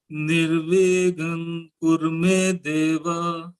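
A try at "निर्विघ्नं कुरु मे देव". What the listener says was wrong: It should be Nga. Kakha Gaga Nga. What I am hearing is Nirvignam Kurume Deva. Please don't do that. It should be Nirvignam Kurume Deva.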